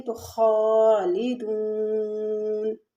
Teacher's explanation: تھوڑا سا ہم کھینچ کے پڑھیں گے خالدون۔ اب یہاں پر جب ہم وقف کریں گے تو خالدون، یعنی یہاں پر نون کے اوپر سے زبر گر جائے گی